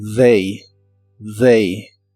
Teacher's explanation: TH de esta palabra se pronuncia como una D vibrante